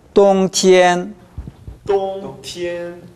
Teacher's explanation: 똥보다는 티엔이 약간 낮습니다. 똥티엔 이 정도 됩니다.